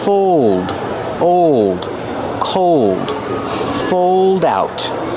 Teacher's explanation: Use the long O like old and cold plus a dark L.